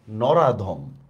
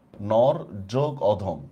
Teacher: দেখেন আমাদের রর মধ্যে একটা অর উচ্চারণ আছে, অধমের মধ্যে একটা অ উচ্চারণ আছে, এই দুইটা অ মিলে হয়ে গেছে আ